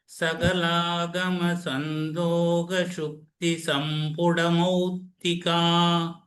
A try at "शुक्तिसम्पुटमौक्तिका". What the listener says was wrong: This Mauktika, so ka should also be heard there.